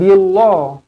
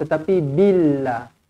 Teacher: panjang Q panjang lu panjang taq Q panjang mu pun panjangah dibaca dengan nipis kerana huruf sebelumnya berbaris bawah